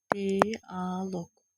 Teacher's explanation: Amma bu alınmalar ki var qı ilə bitəndə, k kimi tələffüz olunanlar, onlar sait artıranda olduğu kimi tələffüz olunur, yəni dəyişməyəcək heç nə.